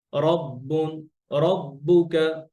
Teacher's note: যখন আমরা রর উপরে জবর থাকে, অর্থাৎ ফাতহা থাকে, তখন এটা ন্যাচারালি মোটা হয়। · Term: র মোটা হয়